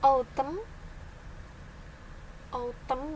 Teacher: Autumn ya, bukan tum tapi tem.